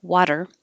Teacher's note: about is it a d is it a t um because my voice is on for the vowel wa and it's on for the er you're just keeping your voice on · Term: alveolar flap